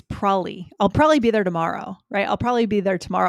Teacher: I skip the B entirely.